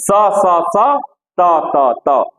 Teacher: दंत स इसीलिए कहा जाता है कि इसका दांत से उच्चारण होता है, बस ये जानिए, इसका उच्चारण स्थान ये है।